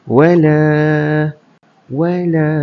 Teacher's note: Lam tu dua harakat eh bukan satu harakat.